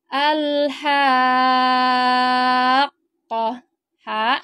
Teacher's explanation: dulu madnya di sini huruf mad enam harakat dibacanya di sini panjangnya enam harakat baru masuk ke huruf q suara kita itu ditinggikan atau dihentak hurufnya ini karena ada tasdid